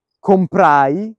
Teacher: ai sono due vocali insieme le considero sineresi quindi le considero una sillaba